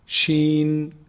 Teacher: pronounced from the middle of the tongue the middle section of the tongue and the roof of the mouth